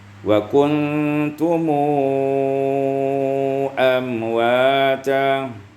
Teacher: Kemudian ayat yang ke-28 wa kuntum amwata, silah mim bi waw maddiyah mushba'ah, dibaca silah mim dengan waw mad yang dibaca dengan panjang